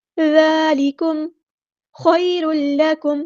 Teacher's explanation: یا ساکن سے پہلے زبر ہے تو مد لین کریں گے، نرمی سے موڑیں گے. خیر لکم نہیں پڑھنا، خیر لکم.